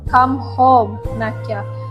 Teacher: Home is pronounced clear or def divong. Stress is placed on home and naka. The phrase end with falling in inonation suggesting calmness but urgency.